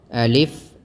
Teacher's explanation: अलिफ हमजा जो है व निकलता है अकसा हलक से यानी हलक जो है व आखरी हिस्से से हमजा निकलता है